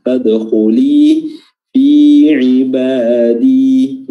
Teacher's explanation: Ya, fadkhuli huruf dalnya qalqalah.